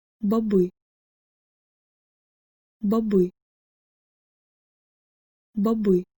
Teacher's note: the O is not actually a long O, but because it is the unaccented syllable in this word, it is shortened